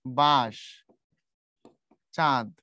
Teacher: নাকের উপরে চাপ দিয়ে উচ্চারণ করতে হয়। যেমন ধরো আমি যখন উচ্চারণ করি এই যে বাঁশ, চাঁদ, এখন তুমি যদি চন্দ্রবিন্দু না দাও, এখানে ধরো চন্দ্রবিন্দু নাই, তখন উচ্চারণ হবে বাঁশ, বাঁশ।